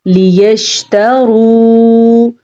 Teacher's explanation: لام کو کھینچ کے نہیں پڑھنا، لام کے نیچے زیر ہے ، اور را کو پر پڑھنا ہے، را کے اوپر پیش · را کو پر پڑھنا ہے، را کے اوپر پیش ہے اور واو مدہ بھی ہے